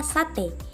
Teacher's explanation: vokal e Tengah atas depan tak bundar pada kata sate vokal e ba e Tengah bawah depan tak